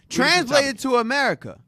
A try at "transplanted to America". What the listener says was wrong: Transplanted. You said translated.